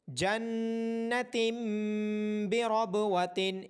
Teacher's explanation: جنت بربوۃ، یہاں تنوین یعنی دو زیر کے بعد حرف با ہونے کی وجہ سے چھوٹا سا میم لکھا ہوا ہے کہ جنتن کے آخر میں جو نون کی آواز آنی تھی اس کو با ہونے کی وجہ سے میم میں بدل کر پڑھا جائے گا